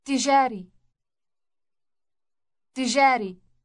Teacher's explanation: Note the doubled or elongated T sound on its beginning.